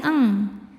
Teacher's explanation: Cara bacanya bunyi nun disamarkan ke kaf disertai bunyi dengung. Dengungnya besar ya eng. Karena kaf makhrajnya jauh dari nun. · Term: ikhfa hakiki